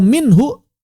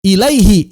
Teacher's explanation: Kalau minhu, maka sebelumnya sukun, haknya nggak jadi mad.